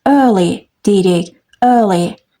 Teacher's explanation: bu üç hərfin birləşməsini sadəcə uzun ö kimi tələffüs edirik